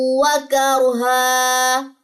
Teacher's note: ایک زبر گرے گی، ایک زبر الف کے ساتھ مل کے لمبی ہو جائے گی اگر وقف کرنا ہے